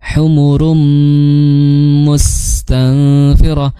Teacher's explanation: tanwin bertemu mim maka masuknya sebagai idgham bighunah. Dan bunyinya itu kamil.